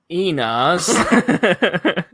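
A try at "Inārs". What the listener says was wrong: You have to roll the R because it's not an English name.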